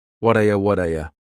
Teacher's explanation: That T at the end of the word what is going to change to a D sound. This is really typical of American English, where a T that's surrounded by vowel sounds is going to change to a D. It's called a flapped T.